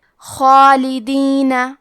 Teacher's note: ہمیں مد الف کو بھی بھاری آواز میں ادا کرنا ہے